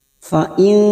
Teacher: nun sukun bertemu kaf ikhfa hakiki, kita samarkan bunyi nun sukun 3 harokat